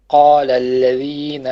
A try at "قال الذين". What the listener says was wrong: you stretched the noon, you said na. Once again.